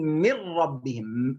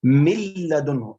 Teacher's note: أين ذهبت النون؟ أضغمت إدغاما كاملا بدون غنة.